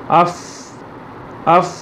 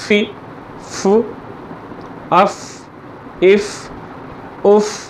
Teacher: होंठ का जो अंदर का हिस्सा है उसके साथ आपका दांत का जो किनारा लगता है। फ फ फ, और तेज़ी से हवा निकलती है।